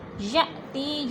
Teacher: یا پہ حمزہ ساکن ہے، جھٹکا دے کے پڑھیں گے۔ تی پہ یا مدہ، یا ساکن سے پہلے تا کے نیچے زیر ہے تو یا مدہ کو 1 الف 2 حرکات کے برابر لمبا کر کے پڑھنا ہے.